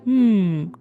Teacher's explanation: with the mouth full and the lips closed, there's only one sound they can physically make. A nasal hum.